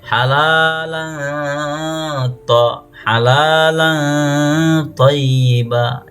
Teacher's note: Jadi tanwin atasnya samar ya, samar seakan-akan menyebut tanwin atas sama dengan huruf to. Halalan sebagian fathatain, sebagian huruf to.